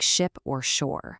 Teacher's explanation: The sh is just like the French sh, super smooth and continuous, like ship or shore.